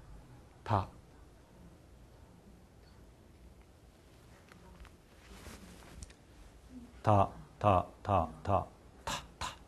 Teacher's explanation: 다 더 더 더 더 더 더 더 정확히 이야기하면 다 다라고 이제 발음을 하면 성대는 떨려요 진동을 합니다 다만이 자음 때문에 진동하는 것이 아니고 아라는 모음 때문에 진동을 하는 겁니다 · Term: 유성음